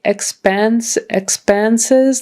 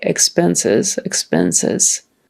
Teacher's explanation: you could say expense expenses like a short e or sometimes we would just say it like a short I